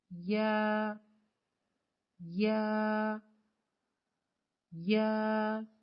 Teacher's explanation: پھر ہے یا، یا 2 حرفی حروف میں سے ہے اور باریک حرف ہے، یا کو پڑھنے کے لیے زبان کے درمیان کو تالو کی طرف بلند کرتے ہوئے باریک آواز میں پڑھیں